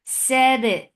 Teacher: For fatha open jaws attached ba. Ba will get sifa of qalqala. And this letter is majhura. It has no flow of breath. So the sound should be very clearly heard for qalqala.